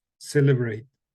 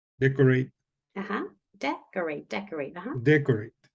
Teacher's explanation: they tend to have that first syllable stressed